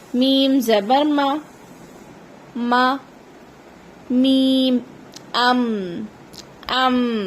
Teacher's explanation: میم ادا ہوتا ہے دونوں لبوں کے خشک والے حصے سے۔ خشک والا حصے سے مراد ہے جب ہم لپسٹک لگاتے ہیں نا، جہاں پر لپسٹک لگاتے ہیں وہ حصہ جب ایک دوسرے سے ملتا ہے تو حرف میم ادا ہوتا ہے۔